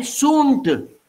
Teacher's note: N nasalizes that oo. It becomes oom, okay.